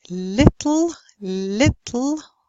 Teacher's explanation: the first L would be clear and the last would be dark